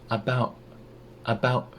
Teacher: the T in about turns into a glottal stop